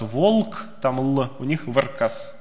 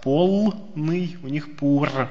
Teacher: Нашему «л» у них может соответствовать «р».